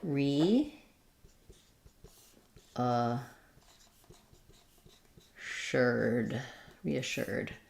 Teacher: so we have the stress on the shirt syllable in this case we do have a little secondary stress probably on the re · we do have a little secondary stress probably on the re because we do say a clear e vowel here for this re